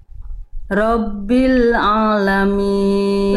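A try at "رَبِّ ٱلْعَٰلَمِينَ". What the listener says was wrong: Nah, ainnya udah bisa Bunda.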